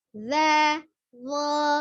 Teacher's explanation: Tetap ngucapin zo sama dengan za, tapi hanya pangkal lidah naik. Jadi tidak ada perubahan dari nampak luar.